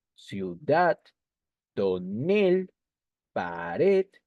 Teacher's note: son palabras agudas porque la mayor fuerza de voz está en la última sílaba